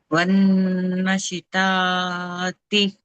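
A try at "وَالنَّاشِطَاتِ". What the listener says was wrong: నూన్ మీద అలిఫ్ సగిరా miss అయ్యారు. వన్నాషితాతి వన్నాషితాతి. నాకు దీర్ఘం తీయాలమ్మా. వన్నాషితాతి.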